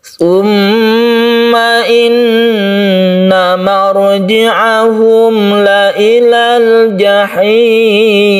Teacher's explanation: tasydid Nun yang kita sebut dengan ghunnah musyadadah ini kita dengungkan kita panjangkan